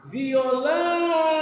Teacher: é [Música] paroxitona vamos falar do violão vamos lá violão a a sílaba mais forte da palavra violão é o lão é a última sílaba da palavra e ela é a nossa sílaba tônica Então nós vamos chamar